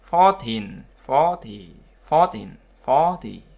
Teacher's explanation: Đuôi teen thì là trọng âm vào nó